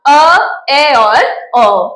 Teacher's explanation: तीन स्वर हमारे पास रहते हैं वो आते हैं अर्ध में अर्ध विवृत यानी मुंह का आधा खुलना